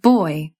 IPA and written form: oɪ̯ (boy)